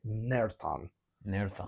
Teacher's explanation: I believe it's a uvular fricative